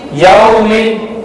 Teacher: اور واو لین کو بغیر کھینچے بغیر جھٹکا دیے معروف پڑھتے ہیں